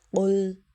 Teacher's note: قاف کو ہم موٹا کریں گے اور لام ساکن پر کلکلا نہیں کریں گے کیونکہ حروف کلکلا 5 ہیں، قاف طا با جیم دال، تو اس وجہ سے لام ساکن پر کلکلا نہیں ہوگا.